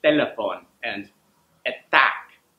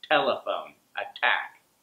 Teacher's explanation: So the tongue goes just a little bit forward if you're speaking Spanish. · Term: Spanish T